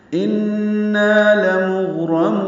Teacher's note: ان میں نون مشدد پہ غنہ ہے، نا الف مدہ ہے، 2 حرکات لمبا ہے۔